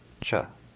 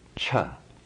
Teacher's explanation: The first letter in magenta, unaspirated, cha. The second letter, aspirated, cha.